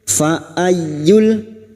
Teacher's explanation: masuk pada huruf ya yang bertasdid, hanya masuk tanpa mendengung, tanpa ditahan lama-lama